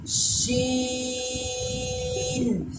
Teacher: سین اور شین ایسی آواز نہیں آنی چاہیے، بلکہ شین۔ شین آخر میں نون میں آ کے آواز فوراً سے رک جانی چاہیے۔ پھر دیکھیں، شین۔